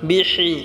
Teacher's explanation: হাটা আমরা গলায় চাপ দিয়ে উচ্চারণ করব।